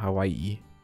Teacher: Und das drückt dann aus, dass man so ein Glottalverschluss, Knacklaut, wie auch immer, machen soll. Also ein Ä, also Hawaii mit so einem Stopp zwischendrin. Das ist dieser Glottalverschlusslaut oder Knacklaut